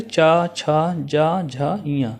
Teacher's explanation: इनका उच्चारण स्थान तालु से होता है। और इन्हें चा, छा, जा, झा, इया को स्पर्श संघर्षी कहते हैं। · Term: चा वर्ग